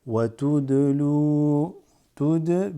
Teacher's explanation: because the dal has qalqala, slight doubling. Wa tudlu biha ila biha ilal, because that drops, goes straight to the lam.